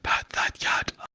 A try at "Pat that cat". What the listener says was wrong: I think you're a bit higher there this time.